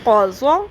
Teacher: اس میں زبان کی کروٹ کو اوپر والی داڑوں کی جڑوں سے لگانا ہوتا ہے، اس لیے بہت دھیان سے اس میں زبان کی ٹپ نہیں لگنی چاہیے تاکہ ز کی آواز نہ نکلے اور نہ ہی دال موٹے دال کی آواز نکلے. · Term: ضاد